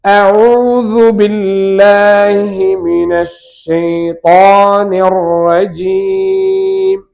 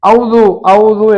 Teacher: இதுல கவனிக்க வேண்டியது, பொதுவா எல்லாரும் அவுது அவுது என்று சொல்ற பழக்கம் இருக்கு. இது ஹம்சா தொண்டையின் கடைசியிலிருந்து வரணும், திருப்பியும் ஐனு தொண்டையின் நடுவில் இருந்து வரணும்.